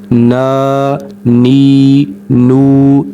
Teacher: ناک میں آواز نہیں جانی چاہیے